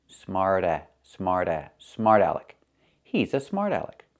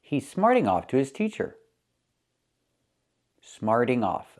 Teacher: the T changes to a fast D